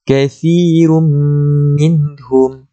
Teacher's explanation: Kita tengok pada ra itu bertanwin, kemudian bertemu dengan mim. Tanwin apabila bertemu dengan mim, hukumnya di situ ialah idgham bi gunnah. Cara bacaannya kita dengung, masukkan dengan kadar dengung dia 2 harakat.